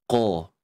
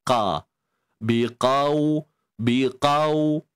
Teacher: Tetapi ingat, lunak hanya berlaku pada sebutan waw itu sahaja. Untuk qaf, nak tak nak kita kena kekalkan sifat tebal dia.